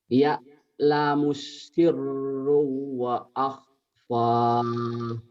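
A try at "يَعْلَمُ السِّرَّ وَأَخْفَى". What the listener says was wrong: bukan syirro tapi sirro.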